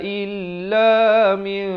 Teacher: Jadi di sini ditukarkan daripada bunyi min kepada bunyi mim. Bibir dibiarkan renggang sedikit. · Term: iqlab